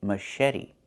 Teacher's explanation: The CH makes a soft sh sound, like in fish, mush. And then eddy.